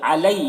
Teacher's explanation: یکو، کو میں واو مدہ ہے، اسے ایک الف کے برابر کھینچیں گے۔ علی، یہاں پر یالین ہے، اسے نرم آواز کے ساتھ جلد پڑھیں